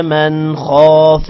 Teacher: من نون پر غنہ نہیں کرنا کیونکہ آگے حروف حلقی خا آ رہا ہے. خا کو موٹا کرنا ہے.